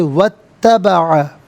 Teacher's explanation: واو پر زبر ہے، اس سے اتبع کی تا کے ساتھ ملائیں گے، درمیان میں سے الف یعنی حمزہ کو حذف کیا جائے گا. ہم اسے پڑھیں گے واتبع.